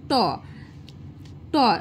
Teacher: জীবটা উল্টে গিয়ে দেখো তালুর পিছনের দিকে যাচ্ছে, ওটাকে বলছে মূর্ধা। তাহলে যখন জীব আমাদের মূর্ধাকে স্পর্শ করছে তখন আমরা সেটা বলছি কি না মূর্ধন্য বর্ণ।